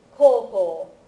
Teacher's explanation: Notice that this is with the long vowels, right? If you leave out the two u's, you get koko, which is the word for here, not high school. Okay? So koko and koukou, very important to make those distinctions.